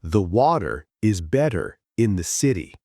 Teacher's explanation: In American English, the t becomes a soft d. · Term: flap t